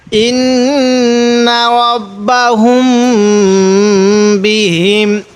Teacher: মিম সাকিনের পরে যখন এরকম বা আসবে তখন সেখানে আমাদের গুন্না করতে হবে